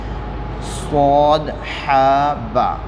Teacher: ہا حلق کے درمیانی حصے سے نکلے گا